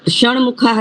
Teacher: તો ટ ની જગ્યાએ ટ નો અનુનાસિક અણ